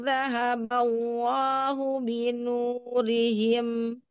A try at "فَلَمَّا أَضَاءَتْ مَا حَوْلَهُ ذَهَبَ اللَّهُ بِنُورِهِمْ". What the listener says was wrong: Ya, berhati-hati. Ma nggak mau masuk hidung ya. Lalu binu, nu-nya juga enggak. Falamma ma. Nah, itu ada ma-nya 2 kali. Falamma adaat ma haulahu dhahaballahu ada binurihim nu enggak ya. ada ma dua dua ma lalu ada nu. Nah, itu berhati-hati ya. Falamma jangan ma. Falamma jadi nggak naik suaranya. Falamma adaat ma haulahu dhahaballahu binurihim.